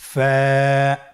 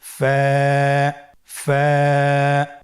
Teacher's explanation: ফা হরফটি উচ্চারণের ক্ষেত্রে বারিক হবে এবং এক আলিফ টেনে পড়তে হবে।